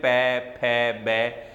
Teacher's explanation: पै वर्ग में पै, फै, बै, ये जितने भी वर्ण हैं इनका अगर हम उच्चारण करेंगे तो हमारे ओष्ठ जो होठ हैं ये आपस में मिलेंगे, इसलिए इसे ओष्ठ्य ध्वनि कहते हैं।